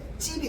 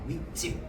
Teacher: 앞말과 뒷말이 만났는데 뒷말이 첫 소리가 된소리로 발음되네